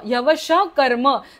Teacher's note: श चा जो विसर्ग आहे तो अर्धा बोलायचा कारण पुढे क आहे